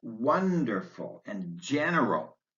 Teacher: adjectives like wonderful and general stress on the first syllable